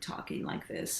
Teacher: right now I'm talking like this and I've got this vocal fry